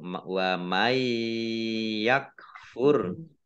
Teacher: Wa may yakfur nun sukun bertemu dengan huruf ya bacaan idgham bi gunnah masuk dengan mendengung yaitu mendengung ya.